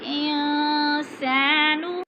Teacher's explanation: ناک میں آواز لے جائیں گے، آواز کو ناک میں چھپا کر پڑھیں گے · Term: غنہ